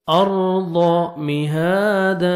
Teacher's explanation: نجعل الارض، را ساکن سے پہلے جب زبر آتا ہے را کو پر کریں گے، ضاد کو موٹا کر کے پڑھیں گے